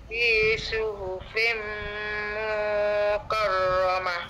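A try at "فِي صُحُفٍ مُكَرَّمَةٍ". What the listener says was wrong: Ah mu satu harakat saja.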